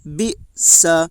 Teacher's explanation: زیر کو جلدی پڑھیں، تھوڑا بھی نہ کھینچیں۔ معروف پڑھیں، مجہول آواز سے بچیں۔